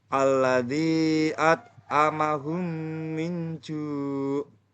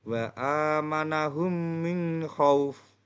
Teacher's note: masukkan huruf mim ke dalam huruf mim disertai dengan suara gunah sekitar 2 ketukan atau harokat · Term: idgham misilan